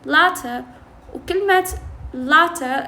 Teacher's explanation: Many American English speakers have a tendency to flap the t and d consonants between vowels so that in casual speech the pairs latter and ladder do not have distinct middle consonants.